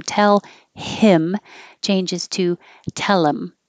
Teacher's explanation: H deletion and TH deletion can happen on pronouns when they're not the subject of the sentence, so they're not that important, and you can connect the consonant before it, get rid of the H, connect it to the vowel after it